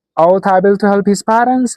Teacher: That is a question. So there must be a rising intonation at the end.